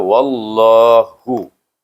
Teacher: Waw kita masukkan dengan lam, bunyinya wallah tebal · Nama Allah apabila baris di atas sebelumnya, maka kita baca dengan tebal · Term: Lam tebal